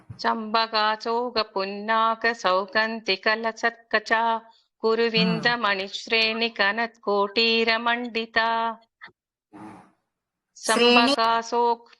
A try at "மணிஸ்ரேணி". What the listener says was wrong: ஸ்ரேணி நெடில் குருவிந்தமணி ஸ்ரேணி கனத் அப்படி வரக்கூடாது. குருவிந்தமணி ஸ்ரேணி கனத் கோட்டீர மண்டிதா அப்படி வரணும். பிரேக் எடுக்காத சொல்லணும். அதுதான் முக்கியம்.